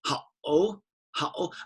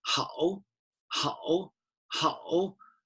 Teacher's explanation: think of it like going aggressively down but then you change your mind and you go up ha oh how and almost like a little break there as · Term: third tone